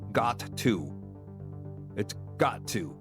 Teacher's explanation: You don't say the t twice.